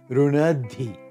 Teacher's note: the ti gains voicing and aspiration. The aspiration migrates over so that the cluster becomes runadi.